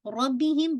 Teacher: ربہم با پہ را ہیوی رہے گا، میم ساکن کا غنہ واضح کیجیے گا